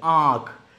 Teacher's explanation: देखो नाक पे आवाज जा रही है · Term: अनुनासिक